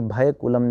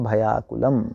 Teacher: भय में आकुल जोड़ें हम तो भय का य और आकुल का आ मिलकर आ ही बन जाएंगे, तो भयाकुल बनेगा।